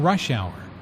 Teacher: Notice that rush hour is a compound noun with the main stress on the first word.